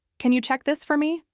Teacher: The same words, now with a friendly rise at the end, "Can you check this for me?" made her sound open and approachable.